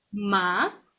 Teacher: the second tone will be like going up